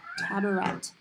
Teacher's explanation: Has two schwa sounds in it.